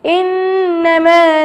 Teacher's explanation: ان پہ میں 2 سیکنڈ تک رکی رہی، یعنی یہاں پر غنہ کرنا لازمی ہے